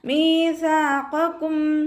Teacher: മഹ്റജ് വരുന്നത് നമ്മുടെ നാവിൻ്റെ അറ്റവും മേലെ മുൻപല്ലിൻ്റെ അറ്റവും തന്നെയാണ്. നാവിൻ്റെ കുറച്ച് ഭാഗം പുറത്തോട്ട് കാണുന്ന രൂപത്തിൽ വെച്ചിട്ട് കുറച്ച് എയർ പാസ് ചെയ്യണ സൗണ്ടും കൊടുക്കുക